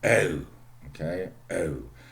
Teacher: if you have long oo in RP, okay, oo, in Cockney you have something like oh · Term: velar diphthongs